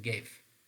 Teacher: because ga actually occurred before a front vowel, it has shifted from its exact position toward our hard palate. Again, this is actually palatalized.